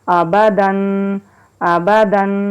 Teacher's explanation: تو یہاں پر غور کر لیجئے، یہاں پر اخفا نہیں کریں گے، یعنی کہ نون کی آواز کو ناک میں نہیں چھپائیں گے، غنہ نہیں کریں گے۔ یہاں ہم سنگل پڑھ رہے ہیں تو یہاں ہم اس کی آواز برقرار رکھیں گے، آبادن، آبادن۔